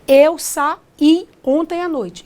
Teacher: O I é tônico, é fortinho e ainda é a segunda vogal. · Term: hiato